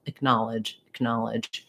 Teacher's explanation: i just start with a little reduced vowel acknowledge acknowledge you can think of this as just like a